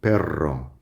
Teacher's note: And the only difference is you're lengthening the R in perro.